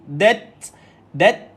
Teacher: Bila matikan ta, keluarkan sedikit angin. Tapi pastikan matikan ti dia dulu.